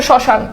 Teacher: ম ফালা যেহেতু শুরুতে আছে এবং দেখো শ্মশানে কিন্তু ম ফালার উচ্চারণ নাই